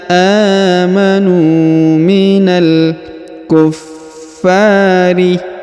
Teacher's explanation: huruf Fa ditahan dan ditekan karena terdapat tanda tasdid lalu dipanjangkan dua harakat